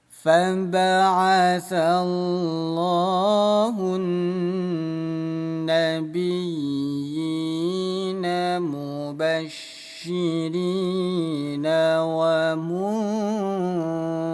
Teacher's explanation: Gunnah itu artinya dengung. Jadi bunyi nun ditahan, dua ketukan dengung.